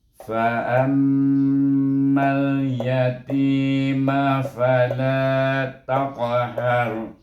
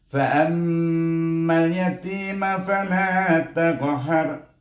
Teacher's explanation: Oleh kerana sebelum ra ni baris di atas, baca ra dengan tebal.